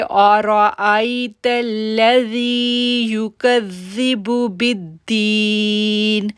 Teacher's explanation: اگر ہم رک گئے تو ہم نی نہیں پڑھیں گے، اور اگر ہم نے کنٹینیو رکھا تو پھر ہم نی پڑھیں گے۔